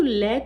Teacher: तो अगर अभी भी आप बोल के देखेंगे तो लय को बोलने में हमारे जो दंत होते हैं वो टच होते हैं, ठीक है। टंग जो होती है वो दंत से टच होती है